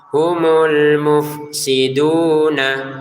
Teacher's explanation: Ada domah bertemu wau dibaca dengan dua harakat